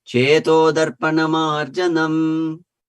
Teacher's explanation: devotees tend to pause after the word marjanam